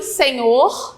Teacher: Senhor, a última sílaba que é a mais forte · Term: oxítona